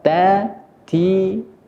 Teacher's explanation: nanti ada nafas yang sedikit agak keluar yang biasa kita sebut dengan sifat Hames jadi tak ini memiliki